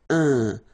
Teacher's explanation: So it's nasal and it's un. So it really goes in your nose. You don't pronounce the M at all.